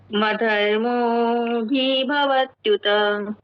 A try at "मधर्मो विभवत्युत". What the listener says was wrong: अच्छा, भी फिर भी आप थोड़ा इस पे टिक रहे हो तो एक बार मेरे साथ बोलिए, मधर्मो विभवत्युत।